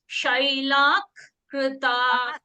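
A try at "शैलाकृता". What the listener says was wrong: Not Shailak. There is no ik. Ich. Shailak. Can you see here? Shailak. Can you see ich? Not ik. Like it's not like Tamil where padam parthan, padattai plus parthan is padattai parthan. It is not ip. Ik, like that. So here in this Visargaha, you have to say Shailah Krita.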